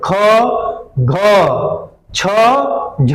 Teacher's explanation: इसीलिए इसको महाप्राण कहा गया, यानी कि ये बहुत बड़ा है, यानी कि इससे मुख से हवा क्या निकल रही है? ज्यादा निकल रही है